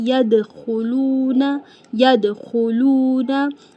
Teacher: दाल कलकला letters में से है। दाल पे हम दाल को हिलाएंगे।